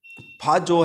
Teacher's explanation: फा जो अल्प प्राण नहीं होता है, ये महाप्राण में आता है।